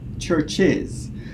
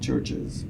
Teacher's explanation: in American English you only have the schwa